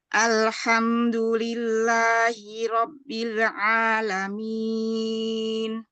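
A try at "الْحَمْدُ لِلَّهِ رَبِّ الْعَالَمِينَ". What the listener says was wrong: Tadi keputus antara Robbil. Coba sekali lagi, Umi.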